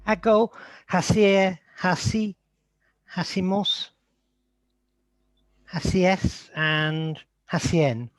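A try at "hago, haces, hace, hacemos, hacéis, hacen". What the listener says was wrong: I know your mum always told you not to drop your H's, but we've really got to get rid of those H's. So hago, haces, hace, hacemos, haceis, hacen. It just disappeared.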